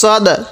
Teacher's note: এখানে একটু ধাক্কা দিয়ে পড়ব, কারণ দালটা যেহেতু কলকলা হরফ পাঁচটি কপ্ত বাজিম দাল, এই জন্য একটু ধাক্কা দিয়ে পড়ব।